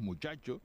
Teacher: Che tiene un punto de articulación diferente de la che peninsular es una Che más atrasada con el punto de articulación de la y y más Sonora